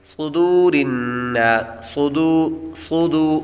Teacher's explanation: صاد کو یہاں پر پر پڑھیں گے کیونکہ صاد حروف مستعلیہ میں سے ہے اس لیے اس کو پر پڑھیں گے.